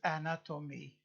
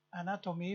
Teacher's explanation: anatomy one two three four syllables stress on the second